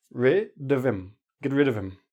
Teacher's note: With him, we drop the H.